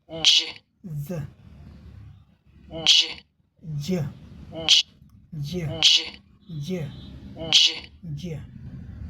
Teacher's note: ये ड और ज़ की तरह यहाँ दो ध्वनियों का कॉम्बिनेशन है, दो व्यंजन ध्वनियों का कॉम्बिनेशन से बना है, लेकिन एक ही ध्वनि है।